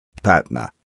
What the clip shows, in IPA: ˈpætnə